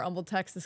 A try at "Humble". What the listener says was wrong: Humble, Texas. Don't pronounce the H.